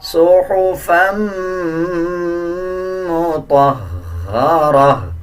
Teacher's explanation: جب فا کو میم کے ساتھ ملائیں گے تو غنہ کریں گے اور غننے کی آواز کو ناک سے نکالا جائے گا